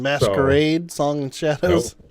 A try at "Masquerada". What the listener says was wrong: nope, Masquerada. it's Masquerade with an A instead of an E at the end. Masquerada.